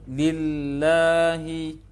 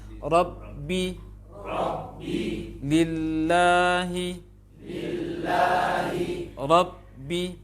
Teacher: Yang bertasydid ayat kedua ini adalah lam tasydid dengan ba tasydid. Waktu mengucapkan lam yang dibutuhkan untuk mengucapkan lam tasydid di sini lebih lama sedikit daripada ba tasydid.